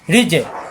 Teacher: রি মিলবে জিমের সাথে, জিম সাকিন কলকল হবে